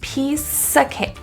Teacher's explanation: The word of is reduced to a. At the end of piece, the last sound produced is an S. That S can slide over to the a and think of it like sa.